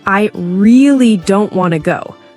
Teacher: The word really is stretched and emphasized.